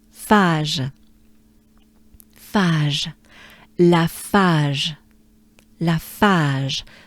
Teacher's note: the second A is a bit sustained, right? A little bit.